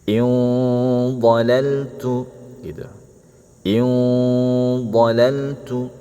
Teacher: In harus tebal dengungnya.